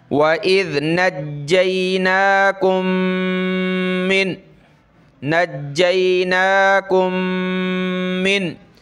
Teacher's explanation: وَإِذْ نَجَّيْنَاكُمْ، دیکھیں یہ میم اس میم سے ملے گی من، تو ایک میم ہم نے پڑھنی ہے اور ناک میں آواز پیدا کرنی ہے